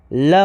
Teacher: ल पार्श्विक व्यंजन होता है।